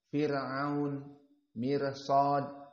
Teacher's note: ro yang sakinah sebelumnya kasrah Firaun mirsad maka ini ro muraqaqoh